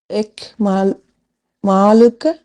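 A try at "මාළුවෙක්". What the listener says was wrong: இல்ல, இல்ல. அந்த டைம்ல மாலுவெக்ன்னு வரும். எக் சவுண்ட் வரணும் கடைசில. மாலுவெக். மாலுவெக்.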